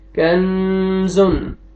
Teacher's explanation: हुरूफ इख्फा में से नून साकिन के बाद जा आ रहा है तो यहाँ पे आपने नाक में आवाज लेके जानी है